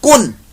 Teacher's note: یعنی اگر تنوین کو میں پڑھوں تو اس کے اندر بھی نون کی آواز آتی ہے. کن، آپ کی زبان آخر پر نون کے مخرج پر ٹچ ہو جاتی ہے